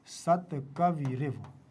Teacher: विसर्ग संधि हो जाएगी और र बन जाएगा यहां सत कवि रिव ठीक है ना कवि और यहां र